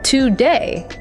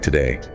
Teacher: >> But a native speaker puts all the stress on the second syllable day. So the first syllable, the two gets reduced. It becomes a weak quick schwah.